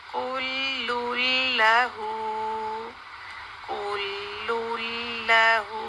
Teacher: اس نون ساکن ساؤنڈ کو ہم نے لام کے اندر مکس کیا، یعنی ادغام کیا اس کا، اور اس کے اوپر تشدید ڈال دی.